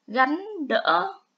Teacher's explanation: tiếng đỡ có thanh ngã khi đọc mình cần lên giọng